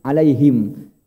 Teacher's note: ha itu kan tempatnya di bawah Pak, di tenggorokan bawah ha. Ya, alaihim.